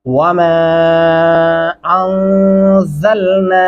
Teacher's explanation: غنہ کریں گے یہاں پہ اور زا کو سختی سے پڑھیں گے